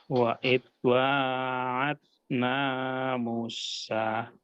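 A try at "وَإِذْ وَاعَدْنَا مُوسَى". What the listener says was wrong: Nah, ininya panjangkan 2 harokat Pak ya. Musa.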